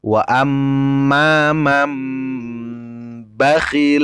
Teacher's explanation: membaca iqlab itu seperti itu tadi merubah bunyi n menjadi m merubah bunyi nun mati menjadi mim mati